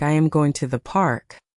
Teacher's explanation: The words I am and to the should be very small and very quick.